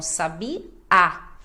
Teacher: sabiá, a sílaba mais forte é a última, até porque tem o acento indicando. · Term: oxítonas